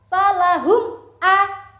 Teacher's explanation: Jelas itu tidak berdengung, tidak mingkem lama. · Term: izhar syafawi